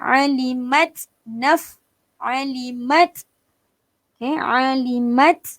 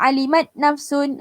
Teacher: Perlu lepaskan angin ta tu. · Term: Hamas